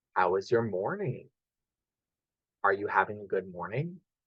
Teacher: We have a rising tone at the end of the sentence.